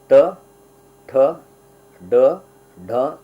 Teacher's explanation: ಮೂರ್ಧ ಅದಕ್ಕಿಂತ ಹಿಂದೆ ಹೋದರೆ ಮೂರ್ಧ ಅಂತ ಹೇಳಿ ಟ ಠ ಡ ಡ ನಮ್ಮ ನಾಲಿಗೆ ಇನ್ನು ಹಿಂದಕ್ಕೆ ಹೋಗ್ತದೆ